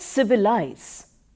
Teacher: the word civilize is pronounced with stress on the first and the third syllables